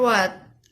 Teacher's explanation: This consonant sound is produced when the back part of tongue contacts the soft palate and lips also come close to each other. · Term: labiovelar sound